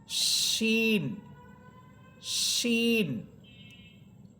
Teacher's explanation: শিন হরফের আওয়াজটা অনেক বড় হবে, বিকট হবে এবং এটার উচ্চারণটা শাসা আওয়াজ হবে, শাসা শব্দ হবে।